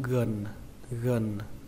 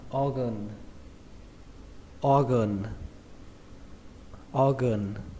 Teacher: Chúng ta xuống giọng âm thứ hai, đó là âm gần, gần. Chúng ta ghi là A, nhưng mà các bạn cứ tưởng tượng đây là âm ơ các bạn nhé. Đọc là organ, organ, organ.